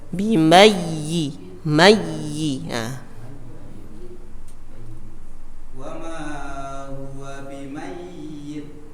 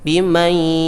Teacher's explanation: Tidak digunnahkan tetapi ditasydidkan, cukup ditekan.